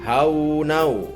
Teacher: Maka dibacanya harus dengan dengung dan ditahan sampai 3 harokat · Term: idgham bigunah